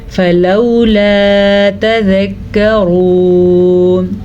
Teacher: فلولا تذکرون، را کو پر پڑھنا ہے کیونکہ را پیش کے ساتھ ہے